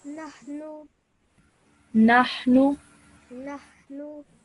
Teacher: Just make sure you don't stretch the sound out of nu for too long. 1 second is enough